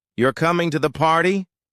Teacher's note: With falling intonation, it becomes a statement of fact. With a specific rise fall pattern, it can express surprise, doubt, excitement, or sarcasm.